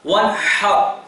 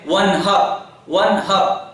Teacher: یہاں لفظ، اس آیت کا آخری لفظ جو ہے وَانْحَرْ، یہاں اللہ رب العالمین نے اس لفظ میں بڑی ہا استعمال کی. وہ ہا جو کہ حلق کے بیچ حصے سے ادا ہوتی ہے، حلق کے درمیانی حصے سے ادا ہوتی ہے. وَانْحَرْ جس کی آواز ہوتی ہے ہا.